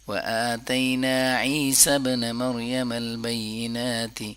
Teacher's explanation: نا کو لمبا کریں گے کیونکہ الف مدہ ہے